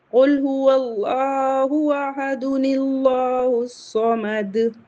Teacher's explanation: تو یہاں اگر ہم ملا کے پڑھیں گے تو نون قطنی لگائیں گے اور دال کی ایک حرکت نون زیر نی میں کنورٹ ہو جائے گی